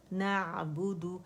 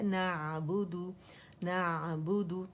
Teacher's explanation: آواز یہاں کہیں کٹ نہیں ہوگی, شدہ پیدا نہیں کریں گے اس میں, آواز جو ہے وہ جاری رہے گی, نرمی سے ہم نے ادا کرنا ہے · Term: توسط عین